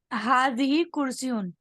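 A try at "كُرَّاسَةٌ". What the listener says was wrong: कुर्सी क्यों? कुर्सी क्यों? कुर्रासतुन, ठीक है। ठीक है, कुर्सी जब होगा तो अलिफ नहीं होगा, सीन के बाद यह होगा, कुर्सी।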